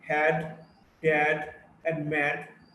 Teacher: the voiced alveolar plosive. D in the words had, dad, and mad.